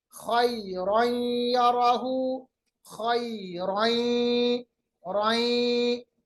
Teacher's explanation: तनवीन के बाद खैरन यराहु, खैरन, रई, दो जबर को या के साथ मिलाया, इसमें हमने इदगाम किया, मिलाया, उस साथ साथ में जो आवाज है नून की वो खशूम में चली गई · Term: गुन्ना